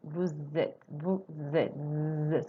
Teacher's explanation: So the S is pronounced as a Z. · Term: liaison